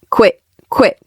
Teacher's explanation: The airflow stops before I hit that T. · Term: stop T